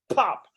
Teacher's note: put your hand in front of your mouth and say pop you can actually feel the force of that plosive uh sound coming from the letter p